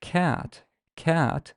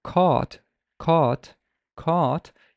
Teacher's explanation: if you say the word cat cat you'd realize that your tongue is very relaxed but when you say the word caught caught caught you kind of feel that your tongue is more tense and it's drawn backwards a little bit so this is how